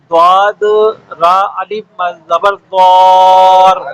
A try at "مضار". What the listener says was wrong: را سے پہلے الف ہے نا تو الف کو پہلے بولیں ضاد الف را مد زبر